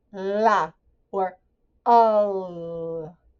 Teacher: Showing the tongue flapping for the L sound.